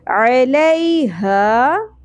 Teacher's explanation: ہا اقصی حلق سے اور الف حرف مدہ ایک الف کے برابر